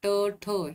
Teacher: ट, ठ ही कठोर व्यंजने पाहायला मिळतात, म्हणजेच मूर्धन्य म्हणजे जे टाळूला चिटकून बोलले जातात ते ट, ठ ही कठोर व्यंजने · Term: मूर्धन्य वर्ण